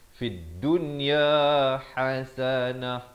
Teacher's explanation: Ha di pertengahan kerongkong.